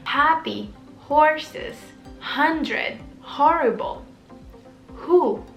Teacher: Y nosotros cuando queremos hacer este mismo sonido en inglés choca un poco porque la H en inglés o este sonido de J es súper sutil. Es como así, como que si respiraste y soltaste el aire, ese es el sonido de la H.